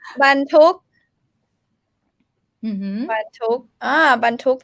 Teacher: ทุก also dead syllable, yeah, and high tone as well, yeah, short vowel.